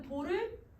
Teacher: 처음이 낮고 높은 소리니까 여러분 돌 이렇게 올리면서 소리를 냈을 거야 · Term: 상성